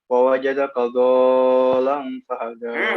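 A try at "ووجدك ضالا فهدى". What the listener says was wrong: Kurang. Matnya masih kurang, terus lamnya nggak ditasdid. Itu kan tasdidnya kan situ lamnya.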